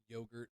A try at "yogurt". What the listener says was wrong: i don't think you pronounce the t in that